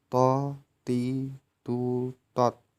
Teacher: dengan menyentuhkan ujung lisan dengan tempat tumbuhnya 2 gigi seri bagian atas, diucapkan dengan suara menebal. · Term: huruf to